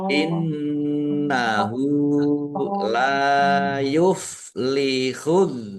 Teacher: nun tasdid dibaca ghunah ditahan biar tampak mendengungnya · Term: gunnah